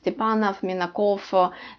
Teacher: But if it's the male form, Minakova, the V is turning into F and pronounced a little bit slight. Sometimes you cannot hear it. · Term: short F